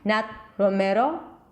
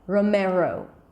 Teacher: Since it's at the end, I would turn it into a long O